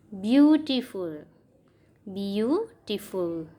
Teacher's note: બી યુ ઉપર વજન આવે છે, ટી ફૂલ ઉપર નથી આવતું.